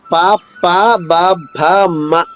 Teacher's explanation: ఈ అక్షరాలు పెదవులు కలవకుండా పలకలేము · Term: ఓష్టవ్యములు